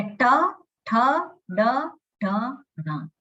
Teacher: શ્વાસ ત્યાં ધીમેથી નીકળે છે. એટલે ટ બોલીએ ત્યારે ત્યાં શ્વાસ કેવો છે એ ઓછો નીકળે, પણ ઠ બોલીએ તો ત્યાં પ્રયત્ન વધારે છે.